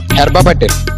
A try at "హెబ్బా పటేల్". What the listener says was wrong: హెర్బా పటేల్ కాదురా, హెబ్బా పటేల్. మధ్యలో ఆరే హెబ్బా.